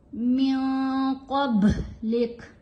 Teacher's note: अगर हम वक़फ़ करेंगे तो जो लास्ट वर्ड है इसको साकिन पढ़ेंगे, इसकी ये जो मूव है इसको अदा नहीं किया जाएगा, हरकत नहीं पढ़ी जाएगी, इसको साकिन पढ़ा जाएगा और बा के ऊपर कलकला किया जाएगा, कॉफ को पुर पढ़ेंगे